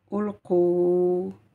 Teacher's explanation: Mais dans la lettre précédente, vous aviez le son OU. Donc, il s'agit du OU long. O en 2 temps.